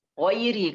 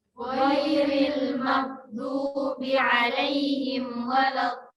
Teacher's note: karena ra-nya berharakat kasrah, ya. Maka harus tipis. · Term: Tarkik